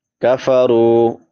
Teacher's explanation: کفرو، کاف باریک ادا ہوگا، را پر پڑی جائے گی کیونکہ را کے اوپر پیش ہے